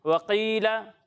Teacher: قاف کو ہم نے پر پڑھنا ہے، باریک نہیں پڑھنا ہے. وکیلا نہیں، وقیلا، ٹھیک ہے، پر پڑھنا ہے.